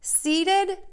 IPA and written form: sidəd (SEEDED)